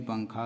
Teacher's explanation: تنوین نون ساکن کے بعد حروف اخفاء آئے تو نون ساکن کی آواز ناک میں چھپا کر پڑھنا چاہیے، نوک زبان تالو سے ہٹا کر